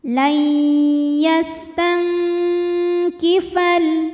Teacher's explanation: Maka cara bacanya nun sukun disamarkan bunyinya siap-siap menuju makhraj huruf kaf disertai dengung. Dengungnya besar ya. · Dengungnya besar ya. Jadi suara yang masuk hidung besar ya, aliran dari mulut sedikit. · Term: ikhfa ab'ad, ikhfa